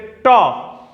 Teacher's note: जैसे ट बोले तो हमारी जीभ हमारी ऊपरी तालू से टकराई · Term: स्पर्श